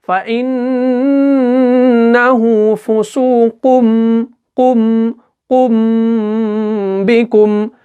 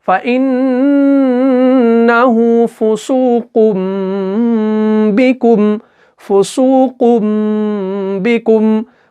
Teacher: तनवीन के बदले में हमें मीम को पढ़ना है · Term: इकलाब